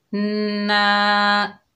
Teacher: आगे अलिफ खाली है, ये अलिफ मद्दा है, एक अलिफ की मिकदार खींच कर पढ़ेंगे।